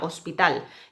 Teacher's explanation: En hospital no aspiramos la H. La H no tiene ningún sonido